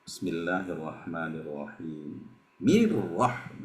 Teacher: Jadi kalau di tengah kalimat Bismillahirrahmanirrahim, tentu hamzah wasolnya tidak dibaca ya.